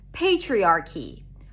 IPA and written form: ˈpeɪtʃɹiɑ:ɹki (Patriarchy)